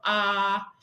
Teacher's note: is very open so it's an open vowel and it's not all the way at the front of our mouth but it's not in the back either it's somewhere in the middle